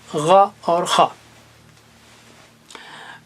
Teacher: خا اور غین حلق کے اوپر سے، تو گویا یہ جوائنٹ کے پاس ہیں، جوائنٹ کے پاس ہیں، اور تینوں اونچے ہیں۔